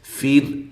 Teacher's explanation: را کو باریک پڑھنا ہے، را ساکنہ سے پہلے زیر آ جائے، را کو باریک پڑھا جاتا ہے